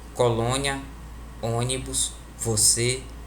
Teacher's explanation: O acento circunflexo, que a gente chama popularmente de chapeuzinho, indica que a vogal possui um timbre fechado